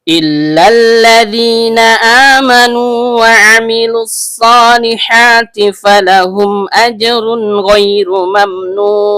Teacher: diawali dengan hamzah berbentuk alif atau hamzah qot yang keluar dari tenggorokan bagian bawah